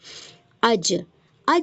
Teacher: اوپر تالو کو چپک جاتا ہے. ٹھیک ہے، جب ہماری زبان اوپر تالو کو چپک جاتی ہے تب ہمارا جیم ادا ہوتا ہے